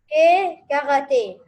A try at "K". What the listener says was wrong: Non, on ne dit pas que. On dit K.